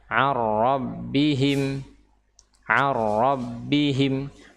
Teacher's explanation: Seolah-olah huruf nun ini tidak ada, dan memang tidak ada karena dia sudah diidghamkan ke huruf ra. Ya, yang tersisa adalah huruf ra tasydid dan tidak disertai dengan gunnah, tidak disertai dengan gunnah atau dengung.